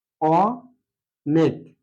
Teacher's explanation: অনেক এখানে লক্ষণীয় বিষয় অ এর মত রয়েছে যার কারণে এটা হচ্ছে বিবৃত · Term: বিবৃত উচ্চারণ